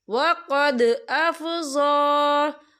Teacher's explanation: ضا کے پر کھڑی حرکات ہے، تو ہم اسے 2 یا 3 حرکت کے برابر کھینچ کے پڑھیں گے